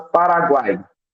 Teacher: os 3 fonemas U, A e I da terceira sílaba não se separam, formando um tritongo